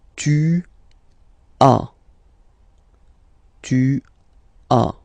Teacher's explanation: as usual in French, final s is not pronounced